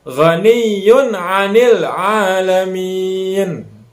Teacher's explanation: Tanwin domah ketemu dengan ain. Ainnya adalah huruf idhar. Jadi pembacaannya jelas. Jangan sampai kita dengungkan.